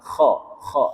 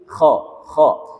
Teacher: itu pakai kho yang ketika kita menyebutnya itu kayak kita seperti mau berdahak. Kho. Nah, tapi jangan terlalu berlebihan, nanti keluarnya dahaknya.